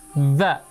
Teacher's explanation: huruf dzal di ujung lidah bertemu dengan ujung gigi seri atas